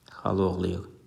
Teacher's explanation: burada xala oğlu sözü xal oğlu şəklində tələffüz olunur ki, burada birinci sözün son saiti düşdü. Xala sözündəki A düşdü.